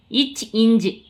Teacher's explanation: இரண்டும் நாவின் இடைப்பகுதி நடு அன்னத்தின் இடைப்பகுதியை பொருந்துவதால் பிறக்கிறது